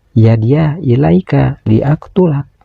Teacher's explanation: Dan selanjutnya ada huruf qof sukun. Huruf qof sukun ini harus dibaca qalqalah yaitu qalqalah sugra. Karena disukunkannya huruf qof ini berada di tengah bacaan. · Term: qalqalah sugro